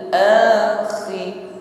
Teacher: Ada bunyi dengkur, ada gesekan di tenggorokan ketika mengucapkan khi. Ditutup dengan ra, khir.